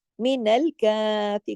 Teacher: काफ के ऊपर देखिए खड़ी जबर है जो एक अलिफ के बराबर यानी दो हरकत खींच के पढ़ी जाएगी